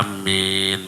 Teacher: maka a dengan minnya itu dengan panjang yang sama, kira-kira 5 harokat. A-nya panjang, amin, minnya juga panjang, ya, seperti itu.